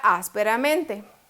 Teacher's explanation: lleva la fuerza no en la última ni penúltima ni la antepenúltima sino otra antes de la antepenúltima